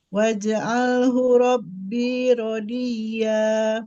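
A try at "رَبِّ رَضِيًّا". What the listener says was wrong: Rabbi, jangan dipanjangin binya. Rabbi radiyya.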